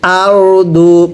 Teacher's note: এই র সাকিনের পূর্বে জবর হলে র সাকিনটা অবশ্যই মোটা করে পড়তে হবে